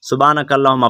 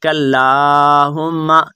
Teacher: لام کو آپ نے لمبا کرنا ہے کیونکہ لام کے اوپر کھڑا زبر ہے